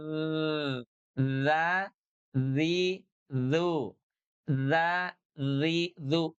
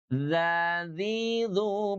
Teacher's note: ujung lidah kita nempel dengan gigi seri atas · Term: huruf dzal